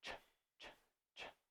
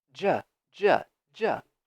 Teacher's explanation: And the only way they are different is by the vibration here in your throat. So if you go ch, ch, ch, and you touch here, there's no vibration.